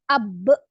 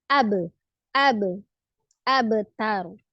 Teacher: kolkolah sifatnya huruf ba ketika dia sukun, tetapi kolkolahnya kecil, tipis, sugro saja ya. Jadi tidak ab, tapi ab, abtar ya.